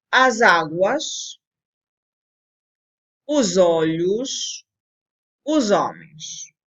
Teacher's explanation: A fonologia explica, a fonologia diz, a fonologia regulamenta que quando um S, por exemplo, quando uma palavra acaba em S e a próxima começa em vogal, a fonologia prescreve, diz que deve haver um enlace entre essas duas palavras